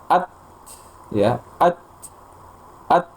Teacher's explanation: Jadi ada hembusan nafas setelah tertahan. Tertahannya suara dulu, kemudian aliran udara atau nafas setelahnya.